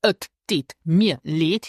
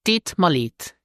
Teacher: when spoken, het is not pronounced, and instead of mir, native speakers say ma